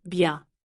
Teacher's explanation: Notice again, the sound bien. It's written bien, but in listening, the N is soft, presque nasal. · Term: nasal vowel